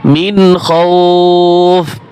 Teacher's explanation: মিম নুন জের মিন স্পষ্ট হবে এখানে গুণ হবে না মিন খাউফ وآمنهم من خوف صدق الله العظيم